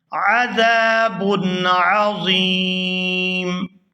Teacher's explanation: یہاں پر وقف کریں گے، وقف کی صورت میں یہاں پر میم جو ہے وہ ساکن ہو جائے گی، میم ساکن ہونے کی وجہ سے یہاں پر مد ہوگی اور ہم اس کو کھینچتے ہوئے یہاں پر وقف کریں گے